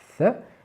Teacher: la langue, il faut la sortir vraiment de quelques millimètres quand même des dents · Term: le son th